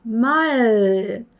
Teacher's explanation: 그래서 L 발음을 하실 때는 우리나라 말의 리을의 받침의 소리, 그죠? 콜, 달, 말 하는 그런 편안한 위치보다는 좀 더 앞으로 당겨주셔야 영어의 L로 인식이 된다고요.